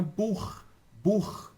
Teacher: No alemão, quando eu tenho CH, tá, depois da letra A, O ou U, esse CH vai ter barulho de garganta arranhando